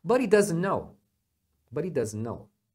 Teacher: que que acontece o He perde o h